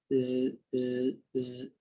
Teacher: Bukan ditekan pada gigi atas dan gigi bawah, tapi lidah, hujung lidah ditekan pada atau diletakkan pada belakang gigi kacip bawah. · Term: huruf zai